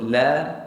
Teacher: Sebab tu kalau sebut la, kita tak pakai betul-betul hujung lidah, kita pakai hujung tepi lidah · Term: huruf lam